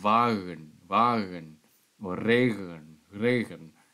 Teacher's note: we have this voiced guttural spirant, as in South German pronunciation.